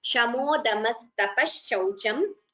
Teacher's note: Visarga followed by sha. We combine the sandhi.